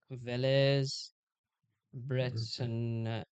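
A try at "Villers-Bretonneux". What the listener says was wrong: The X isn't pronounced. It's different. No, it's not O.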